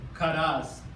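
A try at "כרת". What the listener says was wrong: Karas or carrot? No, carrot. So it's spelt with a T. Ashkenazi do the S.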